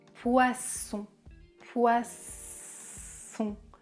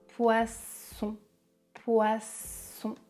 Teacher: Le son est sourd comme un serpent. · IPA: [s]